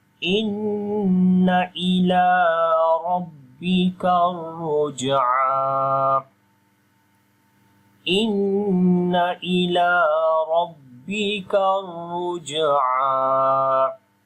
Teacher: on the jim we make qalqala. So the qalqala letter is again coming in the middle of the word. we make a weak qalqala here, and on the ain we long 1 second.